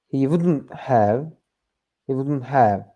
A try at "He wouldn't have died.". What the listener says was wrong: long on the have. Make the have shorter. He wouldn't have died. Have died. Have died. Have died. Have. He wouldn't have died. Yeah, that's too long. He wouldn't have died. He wouldn't have died.